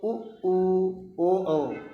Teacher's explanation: इनका जब उच्चारण करोगे तो हमारा जो माउथ है जो मुंह है यह वृत या गोले के आकार का शेप ले लेता है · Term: वर्तुल स्वर